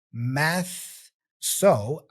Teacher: behind my teeth so the challenge here is the switch right your tongue Starts Here out for the th and then it retracts for the S